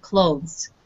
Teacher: Try not to emphasize the TH sound. It's very faint. It's in the background.